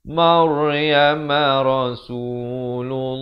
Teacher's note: Lafz jalalah di sini dibaca tebal kerana datang sebelumnya dhammah